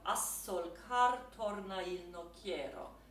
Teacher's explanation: when you have a short word like a, and then the next word is solcar, the S is doubled